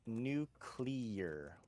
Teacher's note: the word is pronounced nuclear with the emphasis on the first syllable however in the United Kingdom it's nuclear almost sounds like nucleus